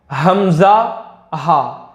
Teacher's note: हलक के नीचे वाले हिस्से से दो हर्फ अदा होते हैं, हमजा और हा। देखिए आप, अगर इसी में बता दूं आपको, आप यहां पर उंगली रख करके देखिए, हाथ लगा, यहां से आपको वाइब्रेशन मिलेगा।